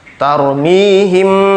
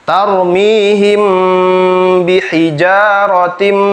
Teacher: dengan ba itu harus ditahan ya membacanya karena termasuk dengung tarmihim dimasukkan ke hidung suaranya dan tahan